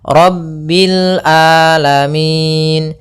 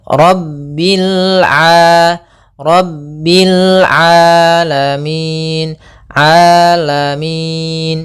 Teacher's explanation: Hati-hati jangan sampai merubah huruf ainnya menjadi hamzah. Banyak yang terjadi kesalahan dalam pelafalannya yaitu mengganti dengan alif atau hamzah.